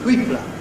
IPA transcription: θ.w.iː.p.l.ə